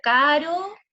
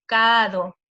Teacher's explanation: reemplazan la R por la D y así